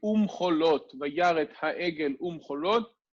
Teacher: ויחיה כאשר קרב אל מחנה וירא את העגל Umcholot, right, before the letters mem, bet, vav, or pei, because these letters themselves are bilabial consonants. The vav conjunction gets the u rather than the v.